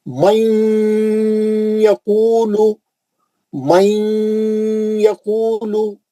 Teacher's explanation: نون کو لے کے یا میں گھس جانا اور غننے سے پڑھنا